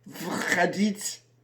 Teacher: Oh no, that's wrong, because it's unstressed. The O becomes pronounced like an A.